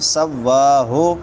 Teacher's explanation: سواہ کھڑی زبر ہے، لمبا کریں گے واؤ کو